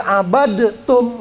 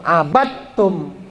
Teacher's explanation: Dua huruf yang sejenis dalam pengucapan. Itu bunyi dalnya masuk ke huruf ta, nggak boleh lagi abadtum, nggak boleh, tapi langsung abattum. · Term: idgham mutajanisain